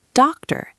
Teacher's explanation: Teacher ends with a schwa. About begins with a schwa. Doctor ends with a schwa.